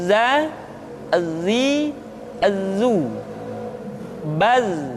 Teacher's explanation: ketika kita mengucapkan huruf za, suara kita mengalir, akan tetapi nafas tidak boleh mengalir. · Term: al-jahr